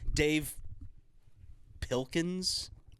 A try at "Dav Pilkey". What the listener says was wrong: Not Dave, Dav. D-A-V.